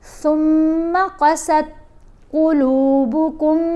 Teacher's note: یہاں پر دیکھیں میم کے اوپر ہم نے غنہ کرنا ہے. ثم، قاف کو موٹا پڑھیں گے، سین کو تا سے جب ملائیں گے تو آپ نے دھیان رکھنا ہے کہ تا حروف کلکلا میں نہیں ہے، اس لیے اس کو آرام سے پڑھتے ہیں، اس پر کلکلا دار نہیں ہونا چاہیے.